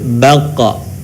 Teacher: Dalam posisi mati maka terdengar suaranya memantul.